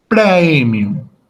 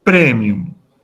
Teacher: por ejemplo el diptongo a él como en la palabra premium en la pronunciación clásica se pronuncia el diptongo completo por lo tanto esa palabra en latín clásico se pronuncia como